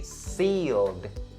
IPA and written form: siːld (sealed)